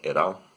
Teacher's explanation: you could have an alveolar tap